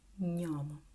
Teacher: One, the Italian way, is a soft, fluid, palatal and nasal sound